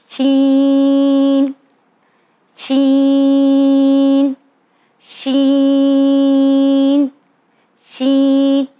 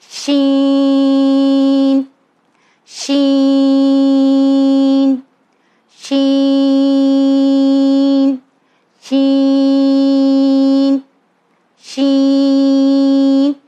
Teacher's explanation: یہ بیچ کی زبان ہمارے اوپر تالو طرف ملے گی تب یہ ساؤنڈ آتا ہے